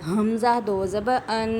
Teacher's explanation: حمزہ بھی حروف حلقی میں سے ہے، تو آپ نے انتہائی حلق سے ادا کرنا ہے، اینڈ والے حلق سے۔